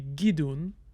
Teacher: change the vowel on that minor syllable to be gidun because the minor syllable has a more restricted vowel inventory than the major syllable